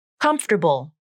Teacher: the letter a is gone from the pronunciation so that leaves the final syllable as bull just a b consonant and a dark l